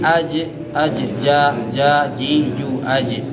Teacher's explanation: Jadi jim ko termasuk huruf yang ketika diucapkan itu memang suara terhenti Pak. Suara terhenti, tidak ada hamas.